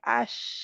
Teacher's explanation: शीन शीन के लिए अगर आप अश कहें अश, तो क्या है कि शीन ज़ुबान का दरमियानी हिस्सा ऊपर उठता है और ये या से ज़्यादा करीब चला जाता है तालु के, या से ज़्यादा करीब जाता है।